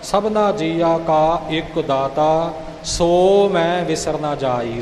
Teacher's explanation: ਇਕ ਤੇ ਜੋਰ ਆਵੇਗਾ